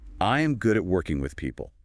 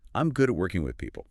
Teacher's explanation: Let me try it with a warm, natural falling intonation. I'll go up and down a little bit, but I'll drop the pitch at the end to show that it's a statement of certainty.